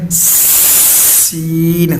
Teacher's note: فا آگے ہے سین، سین کے اندر آپ نے کرنا کیا ہے، اپنی زبان کی نوک جو ہے وہ دانتوں کے اندر رکھنی ہے، باہر نہیں نوک، اور آپ نے بولنا ہے سین تاکہ سٹی نکلے باریک